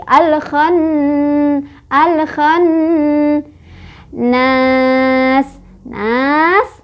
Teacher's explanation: Guna karena ada nun yang bertasydid. Nun bertasydid, cara bacanya adalah didengungkan, ditahan dengungannya 2, 3, atau 4 ketukan. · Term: hukum gunnah